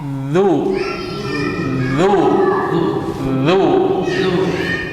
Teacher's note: ujung lidah bertemu dengan ujung gigi seri atas du du du du senyum senyum senyum D jangan tegang senyum